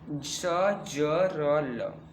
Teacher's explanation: वत्सर्य मतलब दांतों के मूल से, ना कि दांतों के मूल से, मतलब दांत के ऊपर और जो कठोर तालु के अगले भाग से जो है, उन दोनों के बीच का जो जगह होता है, उसके द्वारा जो ध्वनियाँ निकलती हैं वो है वत्सर की श्रेणी में आती है।